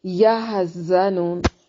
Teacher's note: زا کو سختی کے ساتھ زور سے ادا کرنا ہے، سیٹی کی ساؤنڈ کے ساتھ